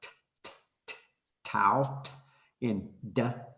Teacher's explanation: dental stops so these are ones we're using your teeth